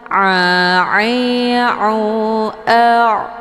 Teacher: muqaddar tandanya ada harakaf fathah tegak di atas huruf A dan a ini bacaannya lunak keluarnya dari tenggrokan bagian tengah sejajar dengan ha kecil